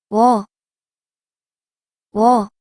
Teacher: This vowel is 워, 워, It is made by combining wu and a. So you should pronounce wu and a in a row very quickly.